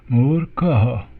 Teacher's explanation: We have a preceding r. There's a r in between the long u sound and the ka, and that r we place on the top there.